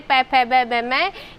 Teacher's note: इनको बोलते समय होठों का स्पर्श होता है, तो इसका उच्चारण स्थान ओष्ठ होता है।